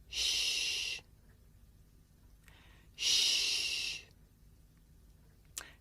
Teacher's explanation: Next we have the voiceless fricative shh. This is a voiceless consonant.